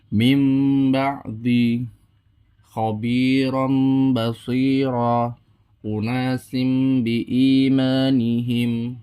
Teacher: atau tanwin bertemu dengan satu huruf yaitu huruf ba caranya adalah menukar huruf nun sukun atau tanwin menjadi huruf mim mati disertai dengan dengung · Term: iqlab, iklab